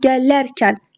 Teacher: Gələrkən lərə düşür. İkinci hecəyə düşür. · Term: vurğu